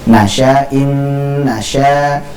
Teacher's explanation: na-nya pendek Pak ya. Nasya, sya-nya yang panjang.